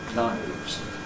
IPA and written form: naɪvz (knives)